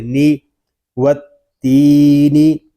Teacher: نون زیر نی و تینی، نون کو ہم نہیں کھینچیں گے کیونکہ نون کے نیچے حرکت ہے اور حرکات کو بغیر کھینچے بغیر جھٹکا دیے معروف پڑھتے ہیں۔